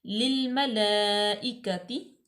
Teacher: لام جو ہے دونوں لام اکٹھی ہیں، ایک لام ساکن ہے، ایک جو ہے وہ متحرک ہے. تو دونوں لام جو ہے وہ باریک پڑی جائے گی